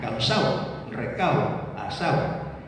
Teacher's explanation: Al caer la D suele producirse el cerramiento de la O final